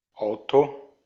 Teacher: Notarán que hay una leve aspiración al principio, ¿verdad? Auto, Como agarrar, como agarrar un poquito de aire, de ahí luego sacar la palabra.